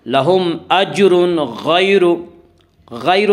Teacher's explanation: غیر غین کو پر پڑھیں گے. غین حروف مستعلیہ میں، حروف مستعلیہ 7 ہیں جن کا مجموعہ خصہ ضغط انقذ ہے جو ہمیشہ ہر حال میں پر پڑھے جاتے ہیں.